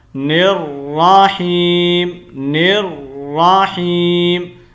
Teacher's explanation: نون کو را کے ساتھ کنیکٹ کرنا ہے اور را کی حرکت کو الگ پڑھنا ہے